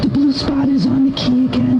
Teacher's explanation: I would describe her voice as severely breathy